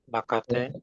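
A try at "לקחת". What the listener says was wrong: Ya, T-nya jangan dibaca ya. T-nya itu seperti berhenti.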